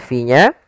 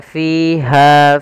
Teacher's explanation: sini kedua-duanya ada Mad thii yang pertama pada lafal Fi yaitu adanya kasrah bertemu dengan Ya kita panjangkan dua harakat fya Kemudian pada lafal Ha Ada fathah bertemu Alif maka juga